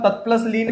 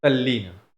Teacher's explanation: तत प्लस लीन में जो त है वह भी ल में बदल जाता है और शब्द बनता है तल्लीन